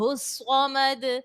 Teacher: صاد حرف مستعلیہ کا ہے تو اس کو پر پڑھا جائے گا ، موٹا پڑھا جائے